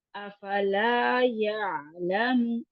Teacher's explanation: افلا اب لا کو یہاں پہ لا جو ہے الف مدہ کے ساتھ، تو افلا شارٹ نہیں کرنا. یہاں پہ جو کریں گے ہم تو یہ لمبا ہی کر کے پڑیں گے.